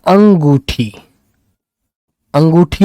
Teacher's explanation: नाक और मुंह दोनों से आवाज आ रही है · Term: चंद्र बिंदु